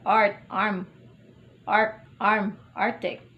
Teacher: The low central vowel. Initial. R, art, arm, arc, arm, arctic.